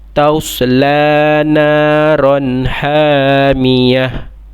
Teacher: Sebab dia adalah tak marbutah. Bila kita nak waqaf, kita kena tukarkan kepada bunyi huruf ha. Okey, ta tu jadi bunyi huruf ha.